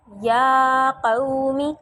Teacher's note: یا کو میں نے لمبا کیوں کیا کیونکہ یہ کھڑا زبر ہے اور اس کو ایک الف کے برابر لمبا کرنا ہے